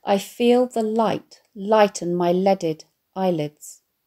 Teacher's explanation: the alliterated light, lighten and leaded, with the liquid l sound